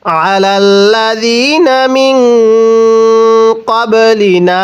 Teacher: বা যদি সাকিন হয় কলকলা করে পড়তে হয়